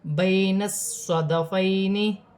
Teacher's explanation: صاد سیٹی والا حرف ہے، موٹے حرف میں سے ہے، مشدد ہے، جمعوں کے ساتھ ادا کیا جائے گا.